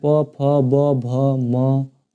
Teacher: ओष्ठ से प फ ये ओठ आके सट रहा है दोनों, तो ओष्ठ इनका उच्चारण हो रहा है।